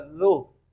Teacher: یہ زال ہے، زبان کی نوک اور اوپر والے دانتوں کا کنارہ